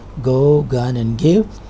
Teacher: The voiced velar sound heard at the beginning of the words like go, gun, and give is represented by g.